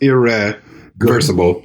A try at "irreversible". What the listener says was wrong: Almost. Irreversible. See, you did an A, and it's an I. Irreversible.